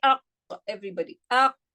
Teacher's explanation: the back of the tongue touching the soft palate in terms of qaf